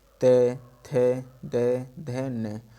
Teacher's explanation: दंत से ते वर्ग, पूरा ते वर्ग हमारे दंत से बोला जाएगा